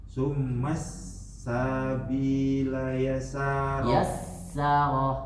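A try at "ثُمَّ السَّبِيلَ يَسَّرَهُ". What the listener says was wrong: Yassarah. Yassarah. Nggak ada tasdid, langsung.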